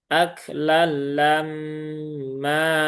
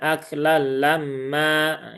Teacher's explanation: atur atur ro atura eh ustazulu watulun aklamma nah tapi mimnya kan ada gunahnya itburu-buru, jangan lammaah lamma lam ma 1 2 3 ditahan dulu tiga harakat